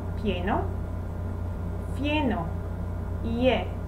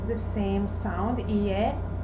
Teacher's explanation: the same sound, IE, the pure sound of the vowel is maintained. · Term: diphthong